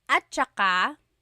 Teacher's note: when it's pronounced, remember the TS combination, it makes that ch sound.